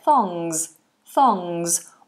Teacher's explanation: We have TH between the teeth. Thong. And it's an NG, so the tongue goes up to the back. Thongs. And a Z.